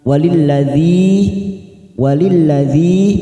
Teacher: kasr bertemu Ya Sukun dua harakat